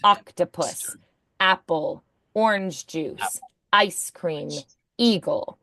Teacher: those are words that start in a vowel so we're going to add that little glottal strike